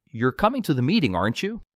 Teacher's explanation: if you're asking a real question, your voice goes up.